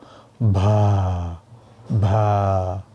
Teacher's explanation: होंठों पे प्रेशर नहीं आ रहा लेकिन हवा निकल रही है।